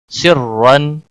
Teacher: دو زبر کے ساتھ را کو پڑھا جائے گا، اور را کو موٹا بھی پڑھا جائے گا۔